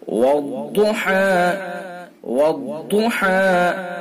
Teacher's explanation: ضاد کو پر کریں گے، زبان کی کروٹ اور اوپر کی ڈاڑوں کی جڑ سے نکالیں گے، پر یعنی موٹا کر کے پڑھیں گے، منہ بھر کے۔